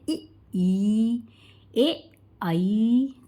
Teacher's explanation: जिन स्वरों के उच्चारण में जिह्वा का आगे का भाग ऊपर उठता है, यानी कि दोस्तों अग्रस्वर में जीभ के आगे का भाग ऊपर उठता है